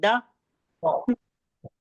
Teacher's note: दाल का द कहते हैं तो जबान लगती है सामने के दांतों की जड़ में